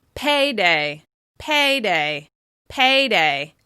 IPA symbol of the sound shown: eɪ